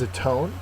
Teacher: our first word is a tone a tone is a verb second syllable is accented it means to make up for